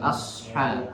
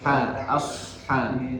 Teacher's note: huruf shad itu harus dikeluarkan dengan suara yang naik ke atas langit.